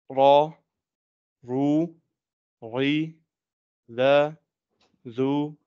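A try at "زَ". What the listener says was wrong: Za, make the za clear. Za. Again, the za, zu, zi needs to be stronger. Like in English, say zigzag.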